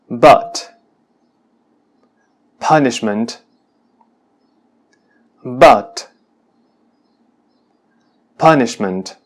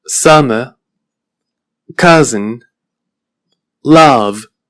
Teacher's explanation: pronunciada con la boca ligeramente más cerrada y con la lengua más próxima al centro de la boca · la A del español me parece más abierta y con la lengua más cercana al extremo anterior de la boca